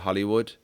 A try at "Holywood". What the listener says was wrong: Holywood, like holy, not Holly. Yeah, it's holy. But Hollywood has 2 L's. Holy.